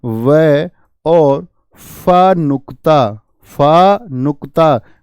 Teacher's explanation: हम बोलते हैं दंत ओष्ठ यह भी एक से अधिक यानी दंत और ओष्ठ से बोले जाते हैं